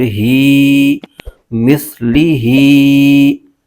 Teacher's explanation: ہا کے نیچے کھڑا زیر ہے، اس کو ایک الف کھینچ کے پڑھیں گے